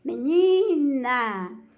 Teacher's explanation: Menina, então, é paroxítona, porque o som mais forte é no ni.